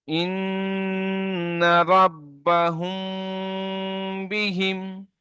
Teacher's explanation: মিম সাকিনের পরে বা আছে তাই মিম সাকিন কে এক আলিফ পরিমাণ গুণনা করে পড়তে হবে।